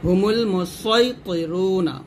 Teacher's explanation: যেহেতু পরের মোটা হরফ আছে ত, তাহলে আপনার সদ ও মোটা করে পড়েন